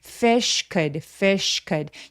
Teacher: 드가 아니라 으 소리에 가깝게 모음 소리를 내도록 해 주세요. fish could fish could 여기서 sh는 fishy could fish라고 바람소리만 날 수 있도록 합니다.